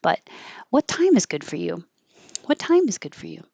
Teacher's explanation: Then you might put the emphasis on you.